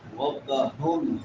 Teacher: بڑی ہا یہ حلق کے آخری حصے سے جو سینے کے ساتھ ملا ہوا ہے